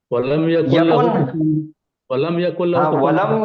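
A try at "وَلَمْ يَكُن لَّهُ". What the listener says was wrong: यकुन, वलम यकुल लहू, वहां पे है देखो कुन, वलम यकुल लहू, तो वो क्यों ड्रॉप हो रहा था?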